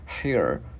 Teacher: Cái mình cong lưỡi chữ R vào here